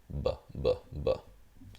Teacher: if you say b, b, b, you'll feel the vibration. You'll also hear it. So English, this would be a stop, bilabial stop.